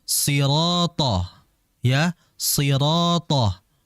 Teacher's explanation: Huruf th ini huruf yang tebal dan dia juga memiliki sifat namanya jahr.